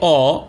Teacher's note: আপনার দুই ঠোঁট কিন্তু গোলাকার হচ্ছে না একটু লম্বাটে হয়ে যাচ্ছে